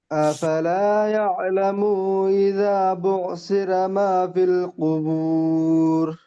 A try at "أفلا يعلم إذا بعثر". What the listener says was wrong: জি মাশাআল্লাহ, ইয়ালামুটা একটু টান হয়ে যাচ্ছে, মুটা টানবেন না।